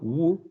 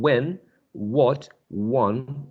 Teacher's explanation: the first sound is this glide or semi-vowel, wu, as in when, what, one